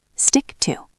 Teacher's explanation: The CK flows into the T.